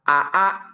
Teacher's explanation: Kalau hamzah dia tidak keluar napas, tidak ada keluar napas gitu. AA, tapi kalau hamzah dia keluar napas.